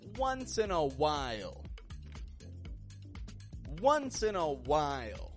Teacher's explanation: And notice with the word once, it's spelled O-N-C-E with an O spelling, but I pronounce it with a W sound. Wah. Once in a while.